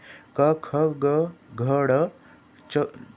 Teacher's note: इसमें वायु कुछ क्षण के लिए रुककर फिर झटके से बाहर निकलती है। मतलब जो वायु है मुंह के अंदर वो कुछ क्षण के लिए रुककर मुंह में फिर झटके से बाहर निकलती है। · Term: स्पर्श व्यंजन